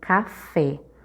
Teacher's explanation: café o fé é a última sílaba da palavra portanto esse fé é a sílaba tônica Então essa palavra ela é oxítona